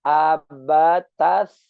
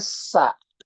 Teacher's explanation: Huruf tsa itu cara pengucapannya ujung lidah digigit sedikit.